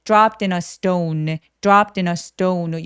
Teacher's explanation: s뒤에 t들은 살짝 된 소리를 냅니다